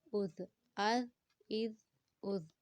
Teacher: وسل ساؤنڈ کے بغیر نرمی سے زال کو ادا کریں گے